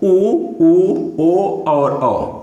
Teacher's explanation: इनके बोलने में हमारे ओठ का आकार गोल हो जाता है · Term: वर्तुल स्वर